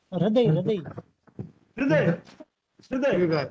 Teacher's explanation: ह के अंदर री स्वर होता है, र रेफ नहीं होता।